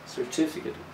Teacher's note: it will show that the second syllable is the strong one